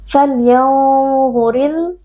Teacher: Falyanzuril alif lam al-qamariyah karena alif lam bertemu dengan salah satu huruf qamariyah yaitu hamzah. Alif lam sukun dibaca dengan izhar atau dengan jelas.